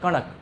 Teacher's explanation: इसमें दांत में नहीं सटा रहे हैं। हम मूर्धा में सटा रहे हैं।